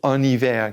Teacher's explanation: En hiver. That H is treated as a vowel. So we say en hiver, carry the N over. And the snow as a noun is la neige.